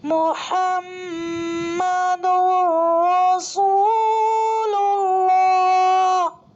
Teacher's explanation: اللہ کے لام سے پہلے پیش ہے تو اللہ کے لام کو بھی پر پڑھیں گے · تنوین کے بعد دوسرے کلمے میں حروف یرملونہ میں سے را آ رہا ہے، تو یہاں پر بغیر غنہ کے ملا کر پڑھیں گے۔ اس کو ادغام بلا غنہ اور ادغام تام بھی کہتے ہیں۔